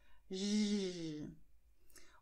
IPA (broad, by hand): ʒ